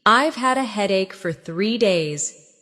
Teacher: Stress headache and 3 days.